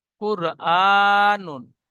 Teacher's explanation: র সাকিনের ডান দিকে পেশ এসেছে, তাই রকে পুর করে পড়বো।